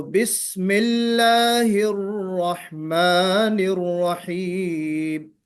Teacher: بسم اللہ میں لام موٹا مت پڑھیے، لام موٹا نہیں ہونا چاہیے، کیونکہ لام سے پہلے بسم اللہ میم پہ زیر ہے